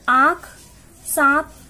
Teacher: इसका उच्चारण मुख तथा नाक दोनों की सहायता से होता है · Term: अनुनासिक